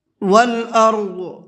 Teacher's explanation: ضاد کو منہ بھر کے پڑھیں گے